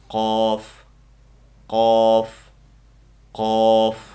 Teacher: Ya'ni tilimizdagi eng orqa qismi bilan ustunki yumshoq tanglay orasidan chiqadi. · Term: Qof harfi